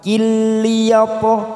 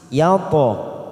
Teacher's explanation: huruf to sukun adalah qolqolah sugro yang mati di tengah kalimat, kita pantulkan.